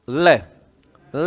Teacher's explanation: तो लय बोलने में जीवा तो मुड़ जाती है और हवा जीवा के आसपास से निकलती है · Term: पार्श्विक